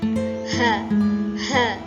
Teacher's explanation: memiliki sifat hamas dan rokhawah, mendesis dan suaranya tidak tertahan.